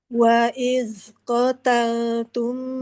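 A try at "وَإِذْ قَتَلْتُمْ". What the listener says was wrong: Jangan waiz, nggak ada nafasnya. Za, ujung lidah nempel ke ujung jari atasnya. Za. Jaza. Jadi gigi jari bawah ya. lagi. Za. Gigi jari atas. terus jangan terlalu banyak keluarnya. Ujung lidah jangan terlalu banyak. Za.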